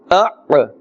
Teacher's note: This is the Ain. Also its makhraj comes from the center of the throat.